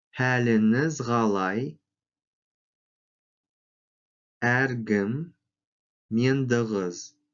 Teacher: После гласного, сонорного или звонкого звука глухие звуки к, х озвончаются, произносятся как г, г.